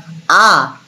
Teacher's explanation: আ মৌলিক স্বরধ্বনি উচ্চারণ করার সময় আমাদের ঠোঁট কোনো রকমভাবেই গোলাকৃতও হয় না, সেই জন্য এটা আনরাউন্ড, অর্থাৎ অকুঞ্চিত, এবং আমাদের ঠোঁট ভাঁজ ভাঁজও হয় না।